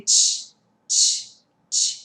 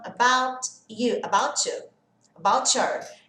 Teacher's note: o T e o Y tem essa junção de som de tch